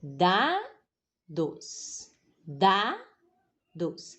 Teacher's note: Então, minha força fica no dá, não é? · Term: paroxítona